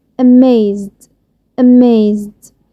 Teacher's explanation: amaze آخره z sound، فلما اجي اضيف دي الدي هيكون صوتها د.